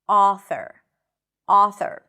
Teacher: This sound is an open back vowel sound. To make this sound, you want to drop your jaw, ah, relax your lips, ah, and it actually sounds very similar to the ah as in father, author, author.